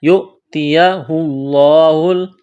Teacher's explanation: لفظ اللہ کے نام سے پہلے پیش ہے تو لفظ اللہ کے نام کو موٹا کرنا ہے